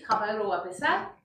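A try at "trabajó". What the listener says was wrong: Pero trabajo con el acento. Trabajo. Trabajo, je travaille. Trabajo, il ou elle a travaillé. Trabajo.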